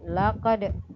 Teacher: membaca yang benar memantul atau qalqalah